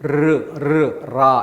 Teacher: 초성에 리을이 쓰이면 라 이렇게 좀 떨리는 소리. 이걸 이제 떨전자 써가지고 설전음이라고 하는데 떨림 소리가 나는 거예요. · 혀가 입천장에 붙었다 떨어졌다를 계속 반복합니다.